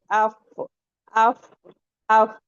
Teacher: हमारे जो ऊपर वाले टीथ होंगे वो आके हमारा जो नीचे वाला लिप्स है उस पे लगेंगे